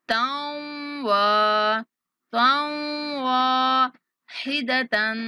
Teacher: یہاں پہ تا کو جب واو کے ساتھ ہم نے ملانا ہے تو غنہ کے ساتھ ملانا ہے، تاؤں واحدتاً، تا پر اخفا کریں گے، صیحتاً واحدتاً صيحة واحدة فإذا هم خامدون فإذا هم خامدون.